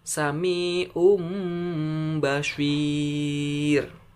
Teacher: bukan Samiun tapi Sami Om mulutnya mingkem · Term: iqlab